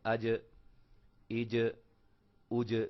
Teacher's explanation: جب ہم اس کو پڑھیں گے پیچھے زبر لگا کر حمزہ کے اوپر، دیکھیں نا، آج، یہ جیم کی آواز جہاں رکی ہے، ٹھہری ہے، وہ حصہ ہے زبان کا درمیان اور تالو کے ملنے سے ادا ہوتے ہیں. یعنی کہ زبان کا جو درمیانہ حصہ ہے جب تالو کے ساتھ اوپر چمٹتا ہے، ملتا ہے، تو وہاں سے جیم ادا ہوتی ہے